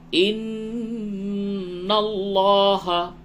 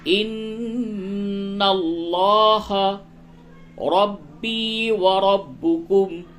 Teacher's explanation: ان اللہ نون مشدد ہے غنہ کیجئے لام کو پڑھ کر کے پڑھیں ان اللہ ربی وربکم.